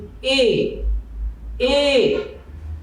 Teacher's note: তাহলে এর উচ্চারণ সংবৃত হয়, অর্থাৎ আমাদের ওষ্ঠ বা ঠোঁট সংকুচিত থাকে। এর জন্য এর নাম হচ্ছে সংবৃত।